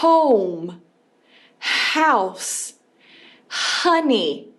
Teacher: O H em inglês tem esse som de R, R inicial, R de garganta, que vem bem daqui.